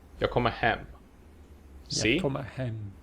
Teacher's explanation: only the last word is stressed, and thus only the last word is actually pronounced with accent 1. The first two words are just kind of rushed through. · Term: sentence prosody